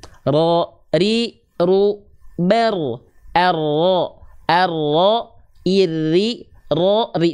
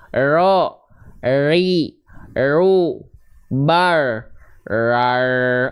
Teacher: Nah, huruf ro itu dia takrir, bergetar tapi sedikit.